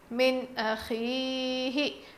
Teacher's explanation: نون ساکن کے بعد حروف حلقی میں سے حمزہ آیا ہے، اسی لیے ہم نون کی آواز کو ظاہر کر کے پڑھیں گے۔